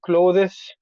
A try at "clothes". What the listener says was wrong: you don't really pronounce the th and close it sounds like close the door